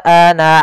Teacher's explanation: Hati-hati jangan dibaca ana aa karena di sini menandakan alifnya diinggap tidak ada. Maka ana ketika lafal apapun di dalam Al-Qur'an pada bacaan ana tidak dibaca panjang nanya.